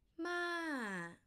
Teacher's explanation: from high to low falling tone